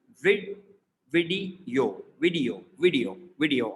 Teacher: And this one is video, video, video, not like video, video. So like a yo sound in the end. So 3 syllables